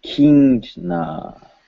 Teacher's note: So the I with two dots means long E, and then the line over it means a horizontal line mark over the body of a vowel symbol represents its nasalized form. So it is a nasalized vowel, means in your nose. Not an N consonant or an M consonant, but in your nose.